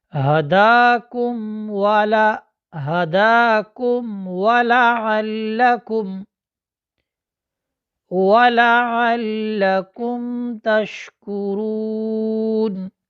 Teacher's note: قاعدہ یہ ہے کہ میم ساکن کے بعد با، میم اور الف کے علاوہ باقی 26 حروف میں سے کوئی حرف آ جائے تو میم کو اپنے مخرج سے ظاہر کر کے پڑھیں گے، واضح کر کے پڑھیں گے۔